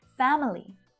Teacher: you will sometimes hear native speakers pronouncing family with a little schwa syllable in there family sometimes i say it like this too so it's not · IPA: /'fæm(ə)li/, /ˈfæm(ə)li/